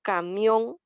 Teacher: al decir camión nosotros estamos entonando la última sílaba